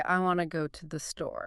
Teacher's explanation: The want to becomes wanna. The to the becomes a tiny blip, a t.